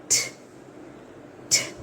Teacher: కార్డ్ vibration ఇక్కడ డ అని పలికినప్పుడు మీకు వైబ్రేషన్ అనేది వస్తుంది అలాగే ట అని ప్రొనౌన్స్ చేసినప్పుడు you can experience no vocal cord vibration at all అస్సలు ఉండదు ఒకసారి చూద్దామా place your fingers on the throat do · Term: వాయిస్ లెస్